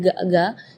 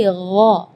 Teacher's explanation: Di ayat ini yang pertama di makhraj huruf ghain ya, ghairil maghdubi ya, perlu diperhatikan, bukan G, bukan huruf G ya, bukan ga, tapi gha. Jadi kalau ga itu dia makhrajnya dari lidah. Ya, tapi kalau huruf ghain itu dari bagian tenggorokan ya. Jadi gha.